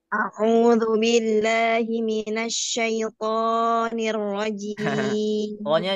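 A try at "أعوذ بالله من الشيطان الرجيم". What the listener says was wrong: jangan ikutan panjang juga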